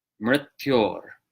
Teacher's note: It's a consonantal R. So vocalic R and then a consonantal R. · So instead of mrt, it's more like mrt, mṛtyor. And that second R is a consonant R, ra. Just like in Spanish, it's a tapped R. It's a consonantal R.